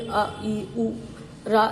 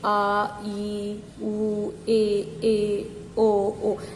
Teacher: छोटा आ जल्दी बोला जाता है और बड़ा आ जो है उसमें टाइम लगता है